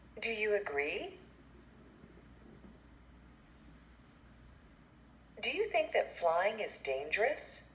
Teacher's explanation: for yes/no questions, it has a rising intonation